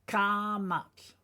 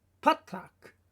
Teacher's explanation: Kamat, just as the sound implies, the A sound is longer, kamat. And then we have patak, it's a shorter A.